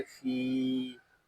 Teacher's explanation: यहाँ फा को हम एक अलिफ तक खींच कर पढ़ेंगे क्योंकि यहाँ या मद्दा हो रहा है